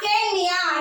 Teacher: சேர்த்து எழுதும் பொழுது அந்த இகரம் தன்னுடைய ஒரு மாத்திரையிலிருந்து குறைந்து அரை மாத்திரை அளவாக ஒளிக்கும். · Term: குற்றியல் இகரம்